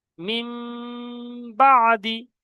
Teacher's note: নুন সাকিনকে মিম দ্বারা পরিবর্তন করে একালি পরিমাণ গুণনা করে পড়তে হবে